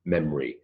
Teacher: there's an O it vanishes it's elided away